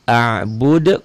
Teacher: qalqalah kubro ya, karena huruf hidup dimatikan dan adanya di ujung ayat, di ujung bacaan.